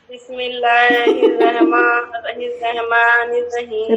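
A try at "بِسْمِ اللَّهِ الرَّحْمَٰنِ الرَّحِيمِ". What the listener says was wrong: रहमान नहीं है, कहा है कि साकिन को जेर जबर पेश के साथ नहीं पढ़ेंगे। बिस्मिल्लाह को अगर आप देखेंगी तो बिस्मिल्लाह के हा पर कौन सी अलामत है? तो साकिन को हम जेर के साथ पढ़ेंगे।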